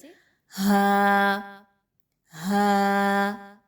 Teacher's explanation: हलक के आखरी हिस्से से जो सीने की तरफ है वहां से अदा किया जाता है तो इसकी अदायगी बहुत भारी अंदाज में की जाती है इसको · اس کو ہا کے ساتھ مشابہت نہیں دینی، بلکہ بھاری انداز میں منہ کو گول کر کے پڑھنا ہے